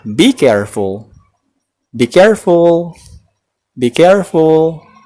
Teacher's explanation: Oke, walaupun kalimat tersebut tergolong kalimat imperatif, namun cara pengucapannya tidak seperti ketika kita menggunakan imperatif dengan bentuk verb 1. Nada atau intonasi yang sering dipakai biasanya lebih mendatar atau menurun.